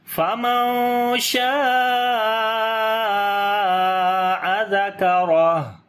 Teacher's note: ہا کے اوپر جزم آ جائے گی اور پھر یہاں پر ہمس کریں گے یعنی کہ سانس جاری کریں گے تو آواز آئے گی فَمَن شَاءَ ذَكَرَهُ۔